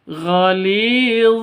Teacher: gainnya keluar dari ujung tenggorokan. Goli li panjang dua ketukan karena ada ya mati diawali dengan kasrah mad asli atau mad thabi'i.